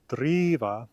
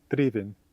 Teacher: driva, to drive, has a longer E sound than drivin, driven.